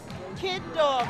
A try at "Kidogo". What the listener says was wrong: Kid Dog? That's not how you pronounce that, is it? Kidogo. Kid Dog. There's an O at the end.